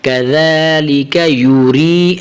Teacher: اب دیکھیں کاف زبر کا ذال کھڑا زبر ذا کذا لام زیر لی کذالی کاف زبر کا کذالک یا پیش یو را زیر یا ری کذالک یوری را کو بریک کرنا ہے را کی زیر کو یا کے ساتھ ملانا ہے